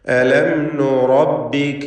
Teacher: റായിനെ തഫ്ഖീം ചെയ്യണം, തടിപ്പിച്ച് സ്വരഭാരത്തോടെ ഉച്ചരിക്കുക